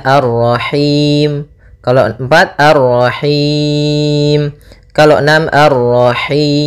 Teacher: boleh kita panjangkan hi-nya karena bertemu dengan huruf mad, boleh 2, boleh 4, boleh 6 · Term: mad arid lis sukun